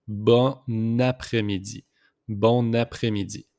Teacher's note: We just make the liaison here with the N and A.